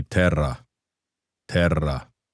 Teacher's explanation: when you have two rs together, it's more of a rolling r sound. It's so instead of terra, it would be terra terra.